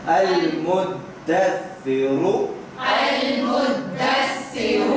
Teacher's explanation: المدثر، المدثر را موٹا ہے، را موٹا کر کے بھی پڑھیں آخر میں